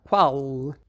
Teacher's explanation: a língua vai um pouco mais para trás, na região do véu palatino, quando os portugueses dizem qual. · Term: velarizado